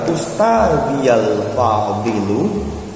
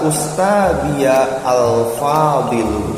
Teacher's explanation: Tetapi disimak, ketika dia menjadi sebuah kalimat dan alif lamnya itu ada di tengah, seperti kata ini, Ustadi al-fadilu wa zumala'il kiramu, itu tidak boleh dipisah. Kata ustadi, ustadi al-fadil itu harus disambung, nggak boleh ustadiya al-fadil